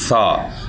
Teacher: یاد رکھیں کہ یہ جو سا ہے اس کو اسی طریقے سے ادا کرنا ہے، اوپر والے دانت اور نیچے والے دانتوں کے درمیان میں زبان رکھ کر اس کو پڑھنا ہے